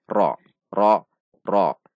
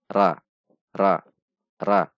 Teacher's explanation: ketika berharokat fathah huruf ra dibaca tebal itu dengan menegangkan pangkal lidah pada titik rock rock rock tidak dibaca ra ra ra namun